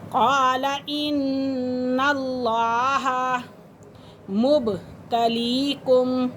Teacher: بالجنود قال قال ان اللہ، مشدد حرف ہے، مشدد حرف اپنے پہلے والے حرف کے ساتھ مل کر پڑھا جاتا ہے اور لفظ اللہ کی لام سے پہلے زبر ہے تو اس لیے لفظ اللہ کو پر کر کے پڑھیں گے، یعنی کہ لفظ اللہ کی لام کو۔